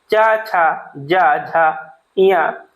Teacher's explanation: च, छ, ज, झ, ञ ये सभी संघर्षशील व्यंजन है